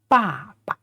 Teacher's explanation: the second syllable is not stressed and it has no tone